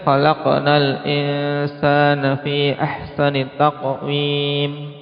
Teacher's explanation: Jadi huruf qalqalah disukun kemudian masih nyambung. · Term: qalqalah sughra